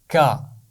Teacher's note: اس کا مخرج ہے زبان کی جڑ اور اوپر کا تالو، ان کو ملانے سے کاف کی آواز ادا ہوتی ہے، اور کاف کی آواز باریک آواز ہے، کا۔